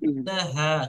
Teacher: এখানে ছোট হা আছে, আপনার উচ্চারণটা বড় হায়ের মতো হয়ে গিয়েছে। তো এটা ছোট হা পড়বেন